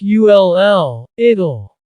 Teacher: when we say the contraction it will, we kind of add a little U sound before the L. It kind of sounds like ULL, it'll.